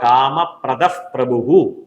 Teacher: വിസർഗത്തിന് ശേഷം പ വരികയാണെങ്കിൽ ഇഫ് പ എന്നുള്ളതായി മാറും.